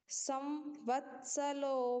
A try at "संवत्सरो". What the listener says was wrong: हाँ, यहाँ पर ल नहीं है, ये आप जिससे भी पढ़ते हैं वहां पर सुधार लीजिए, वहां पर र है। संवत्सरो, संवत्सरः व्यालः, संवत्सरो व्यालः, र को की मात्रा।